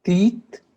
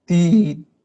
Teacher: It's halting, your tongue is stopping it somehow. So teeth, lots of airflow, like a breeze coming out of your mouth. And teeth is a buzzing coming out of it.